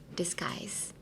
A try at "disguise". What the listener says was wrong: No, that's G. Disguise. So try saying this skies, like the sky, but in like a really bad pronunciation, purposely, like disguise.